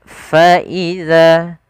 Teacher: [Musik] kaddihan pada lafal Faza lafal FA alirkan nafasnya karena dia Salah satu sifat huruf Fa itu sifat Hames yang di mana Hames ini mengalir nafas kita